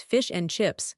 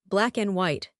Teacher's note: The schwa, it sounds like a punch in the stomach. So fish and chips becomes fish and chips. The and disappears. Black and white, black and white.